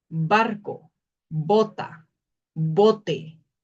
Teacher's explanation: La B tiene un sonido oclusivo bilabial.